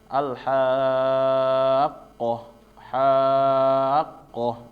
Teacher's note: langsung masuk tasdid dibacanya bukan ditahan tetapi seperti ditekan atau dinaikkan ya intonasinya